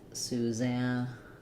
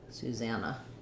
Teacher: in Susannah, we stress in the middle syllable za. So it sounds like Susanna.